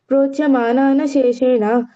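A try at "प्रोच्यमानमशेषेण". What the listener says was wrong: ప్రోచ్యమానాన కాదు ప్రోచ్యమానమశేషేన okay note చేసుకో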